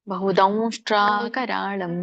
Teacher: ಬಹುದೌ ದೌ ಮೂಗಿಂದ ಹೇಳ್ಬೇಕು. ದೌಷ್ಟ್ರ ಬಹುದೌ ಅಲ್ಲ, ಬಹುದೌ ಬಹುದಂಷ್ಟ್ರಾಕರಾಳಂ.